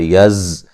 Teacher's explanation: زا کو سیٹی سے ادا کریں گے